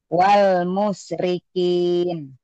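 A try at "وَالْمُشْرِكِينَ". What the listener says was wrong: wal shinnya tuh keluarin. Wal musyrikin.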